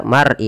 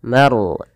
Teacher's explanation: tebalkan lafal ro-nya karena dia ada huruf ro, kita namakan dengan ro tafkhim, harus ditebalkan, jangan dibaca mar'i tapi maru, manya tipis, ro-nya tebal.